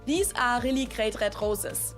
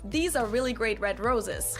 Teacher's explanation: So if you want to sound extra German, you can just pronounce all R's the German way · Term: German R sound